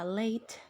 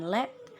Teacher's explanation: pada bunyi A dan bunyi E bisa dilihat bahwa bunyi A itu lebih tense dan E itu dia lax